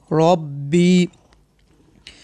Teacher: ایک بات یاد رکھیں آپ، را کے اوپر زبر یہاں پیش ہو، را کو پر پڑھیں گے یعنی موٹا کر کے پڑھیں گے